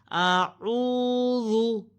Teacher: इसमें सीटी की आवाज़ ना आने पाए, ये जा के साथ इसकी मुशाबत ना हो, और पेश को गोल होंठों से अदा किया जाएगा।